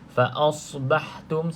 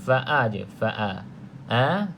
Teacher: pastikan a disebut jelas a bukan o faasbahtum sebab apa jadi O sebab sad Huruf tebal Isti jadi